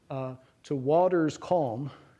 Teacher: you get to put stress on the second and fourth syllables of that. Stress in English, waters, goes on the first syllable, yeah?